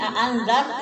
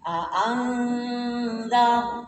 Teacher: Terus ini andar itu tafhim ya. Ketika ada ro sukun sebelumnya fathah, ini tafhim. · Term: tafhim tebal